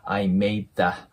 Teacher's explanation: D▁っていうのは破裂音で、次に母音が来ない時は音が消えます